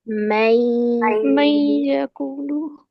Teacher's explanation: हमने या के साथ भी मिलाकर पढ़ना है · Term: इदगाम नाकिस